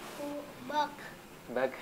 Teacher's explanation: ketika sukun Huruf Kaf ya dia enggak boleh dipantulkan